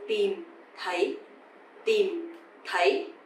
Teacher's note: So tìm is dấu huyền, you have to go down, and thấy, dấu sắc, you have to go up.